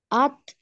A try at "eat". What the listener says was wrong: No, es muy cerquita. En lugar de at, es con otra vocal. Se escribe ea, pero no se pronuncia ea. Tampoco se pronuncia et, pero cerquita. Entonces, se escribe EAT y la pronunciación es it.